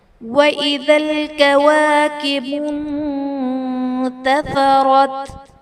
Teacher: نون ساکن کے بعد حروف اخفا میں سے تا ہے تو یہاں پر اخفا کا قاعدہ ہوگا، یعنی نون ساکن میں ہم غنہ کر کے پڑھیں گے